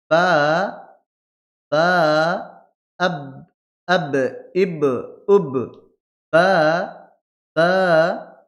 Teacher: দুই ঠোঁটের ভিজা অংশ মিলিত হয়ে উচ্চারিত হবে।